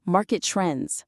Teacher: the T in market can lightly tap the T in trends without a full stop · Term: Intentional catenation